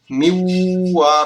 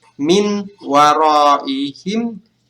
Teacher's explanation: Cara membacanya adalah miwaraihim. Jadi ketika kita menyebut nun, kita langsung meleburnya ke dalam huruf waw di sini. Jadi miwaraihim. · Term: idgham bigunnah